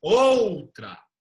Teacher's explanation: de se fosse o som do U seria assim ó Ultra a gente não fala Ultra a gente fala outra o som do o é o som mais forte o o ele é uma vogal forte o a é uma